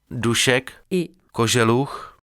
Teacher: les postalvéolaires Š et Ž de Dušek, et Koželuch